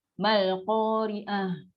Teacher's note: Mak asli jumpa dengan hamzah wasal, automatik kalah mak asli tu. Dia akan baca dengan satu akad je.